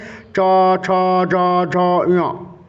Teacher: जब आपकी जीभ कोई भी वर्ण बोलते समय ऊपर की तरफ हिले तो समझ लीजिए वो वर्ण तालु की तरफ तालु से उच्चारित हो रहा है